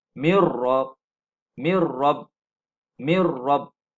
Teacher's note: Min tidak lagi kedengaran. Disebab nun mati ini sudah masuk dalam ra. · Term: idgham bila gunnah